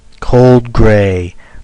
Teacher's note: spondaic which is two stressed syllables